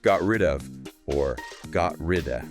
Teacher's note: the final T in got might be unreleased or stopped, especially before the R of rid